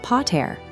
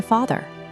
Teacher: Notice the initial consonants. The original p sound remains in Latin, but in Gothic, it shifts to an f. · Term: P to F shift